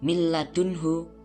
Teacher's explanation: suara nun sukun dileburkan atau langsung dimasukkan kepada lam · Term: idgham bila gunnah